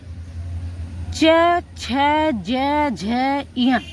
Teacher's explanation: आपकी जो जीभ होती है वो आपके तालु से टच होती है। · तालव्य तालव्य होता है। तालव्य मतलब यह तालु से बोले जाते हैं। इनका उच्चारण स्थान तालु से निकलता है। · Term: तालव्य व्यंजन